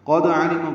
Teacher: قاف پر دال ساکن پہ قلقلہ